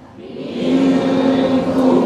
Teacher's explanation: kafnya sudah menyentuh makhraj. Dan suara kafnya tipis